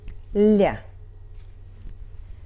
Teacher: Л is before soft sign and it's soft